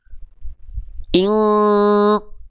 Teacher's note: teman-teman harus rasakan semua suara yang teman-teman hasilkan dari mulut jalurnya masuk ke rongga hidung semua. Ing tuh ketika ditutup pasti hilang karena suaranya jalurnya ke sini. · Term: mendekati eng